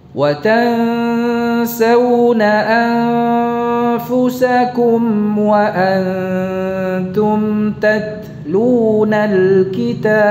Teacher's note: taknya tipiskan pada kata wa antum